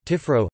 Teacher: The distinctly Occitan development of word final a, pronounced o